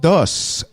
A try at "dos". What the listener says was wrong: You have to pronounce the S. Dos.